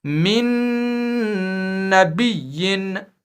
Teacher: تنوین یا نون ساکن میں جو نون کی آواز ہے وہ بالکل ہی مدغم فیہ یعنی تشدید والے نون میں مل جائے گی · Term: ادغام مع الگنہ